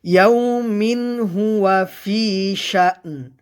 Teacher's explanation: ইয়াউমিন, মিন এখানে তানবিনের পরে, তানবিনটা গণ্য হবে না, কারণ তানবিনের পরে ইজহারে হাকিকির 6 হরফের একটি হরফ হা আসছে, তানবিনকে গুন্না ছাড়া স্পষ্ট করে পড়তে হবে।